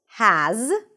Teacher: there is a Z sound at the end, even though it's spelled with an S